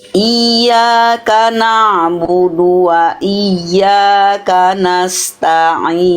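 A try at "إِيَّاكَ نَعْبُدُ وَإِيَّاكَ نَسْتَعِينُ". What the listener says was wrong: Ya, tasdid yang ini. Oke, bagus. Yang ini bagus. Yang ini kurang. Kurang apa Bunda? Ya, tasdid. kira-kira? Kurang tekan alias kurang istilahnya apa?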